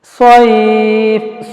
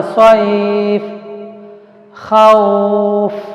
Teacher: تو زبر کے بعد ساکن یا آیا تو اس وقت اس یا کو ذرا نرم کر کے پڑھنا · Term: لین